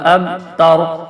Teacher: یہ اسی طرح را وقف کی وجہ سے ساکن ہو رہا ہے اور پیچھے زبر ہے, زبر کی وجہ سے را موٹا ہوگا